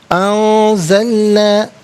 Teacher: انزلنا، نون ساکن کے بعد زا حرف اخفا ہے تو نون ساکن کو اخفا کے ساتھ پڑھا جائے گا، یعنی ناک میں آواز لے جا کر گنگنانا، اس سے اخفا کہتے ہیں.